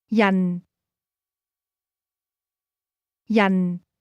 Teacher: This word is pronounced with a falling tone.